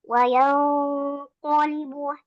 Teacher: Ketika kita ingin melafalkan huruf qaf yaitu karena dia tebal, maka ikhfanya juga harus sudah tebal dengan menaikkan pangkal lidah kita ya. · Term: ikhfa yang tebal